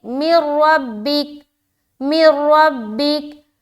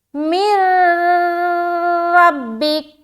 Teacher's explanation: تو یہاں پر دیکھیں نون کو جب ہم را سے ملائیں گے تو یہاں پر ہم کریں گے ادغام تام، اور ادغام تام ہوتا ہے بغیر غننے کے، تو ہم صرف ملا کر نکل جائیں گے